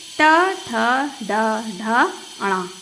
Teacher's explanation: जब हम इन वर्णों का उच्चारण करते हैं तो हमारी जीभ मुड़कर तालु के पिछले हिस्से को टच करती है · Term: मूर्धा